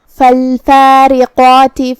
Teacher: کلمت فالفارقات میں یہاں را کے نیچے زیر ہے تو را کا حکم ہوا ترقیق، مطلب ہم را کو ہلکی آواز میں پڑھیں گے